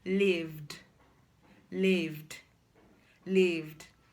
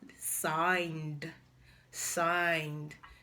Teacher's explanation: when a regular verb ends in a voiced consonant sound, the past tense marker should be pronounced as d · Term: d sound